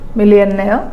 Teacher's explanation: your ears will accept when you give stress on the suffix itself